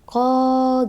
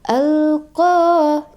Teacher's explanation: mad asli ini pada qah itu panjangnya dua harakat dua harakat atau satu Alif